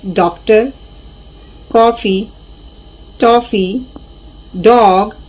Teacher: तो इस प्रकार के इसके एग्जाम्पल्स हैं जो इंग्लिश भाषा से आते हैं, अंग्रेजी भाषा से आते हैं। इसमें सिर्फ चांद होता है, बिंदी नहीं होती, इसलिए हमारे नाक से कोई भी मतलब आवाज नहीं आएगी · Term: आगत स्वर